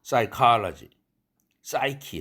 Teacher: 프사이가 아니라 싸이, 프는 소리 내지 않습니다. 프 다음에는 영어 철자는 스는 철자는 와도 철자는 올 수 있어도 왔다 하면은 프는 소리 내지 않습니다. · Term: 묵음